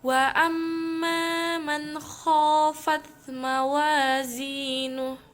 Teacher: Karena terdapat mim bertasydid. Cara membacanya masuk dan mendengung. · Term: gunnah musyaddah